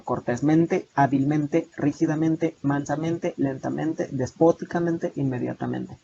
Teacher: Siguen manteniendo en la pronunciación dos acentos fónicos